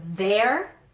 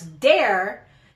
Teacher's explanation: Usually if it's at the beginning of the word, like the word there, I'll say sometimes dare.